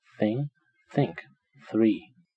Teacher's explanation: this pair is dental fricative which is quite rare in most languages